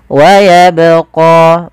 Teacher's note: Pada lafal bacaan wayabqa, di sini ada huruf ba yang diwarnai dengan warna biru. Ini menandakan dia bacaan qalqalah, yang dimana huruf ba ini harus kita pantulkan. Kesalahan yang terjadi, yang pertama tidak memantulkan huruf ba dalam membaca qalqalah.